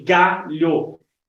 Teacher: a sílaba tônica na palavra galho é a segunda sílaba conta de trás para frente ou a penúltima sílaba da palavra